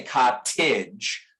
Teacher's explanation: This is the way we say that word, ka didge. Somebody from Britain is going to pronounce that T much more sharply. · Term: internal T